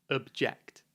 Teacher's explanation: It's the verb object. The stress is on the second syllable